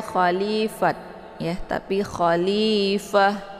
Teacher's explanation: jadi tak sukun ini tak marbutah ini disukunkan saja ya khalifah Jadi kalau misalkan disukunkan dia berubah menjadi huruf H